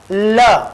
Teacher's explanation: ल वर्ण जो है वो वर्त्स्य वर्ण है, इसको मसूड़े से उच्चारित किया जाता है। आप ल का उच्चारण जब करेंगे तो जीभ जो है दांत और मूर्धा के बीच वाला जो हिस्सा है, जो ज्वाइंट है, ल बोल के देखो आप, तो जीभ का आगे वाला जो कोना है, नुकीला भाग, वो दांतों के और मसूड़े के बिल्कुल टच, मसूड़े से टच हो जाएगा।